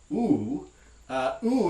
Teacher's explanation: this vowel oh if you remember from the vowel section is a high back vowel meaning that the tongue body is going to be raised and back a little bit near the velum